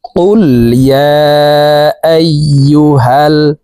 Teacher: কফ জিহ্বার গোড়া থেকে উচ্চারণ করতে হবে। জিহ্বার গোড়া তার বরাবর উপরের তালুর সঙ্গে লাগাইয়া উচ্চারণ করব।